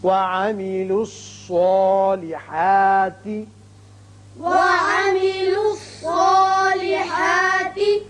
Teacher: صاد چونکہ حروف مستعلیہ میں سے ہے لہذا یہ پر پڑا جائے گا، اس کی وجہ سے جو اس کے اوپر کھڑا زبر قائم مقام الف کے ہے وہ بھی پر ہوگا۔